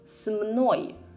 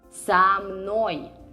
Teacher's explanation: This is the same preposition that means with. We just added a vowel to it because otherwise it would be difficult to pronounce.